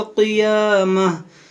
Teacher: यहाँ देखें गोलता है, यहाँ पर हमारी सांस टूटी, हमने यहाँ वक्फ किया तो हमने इसे गोलता को हा साकिना बना दिया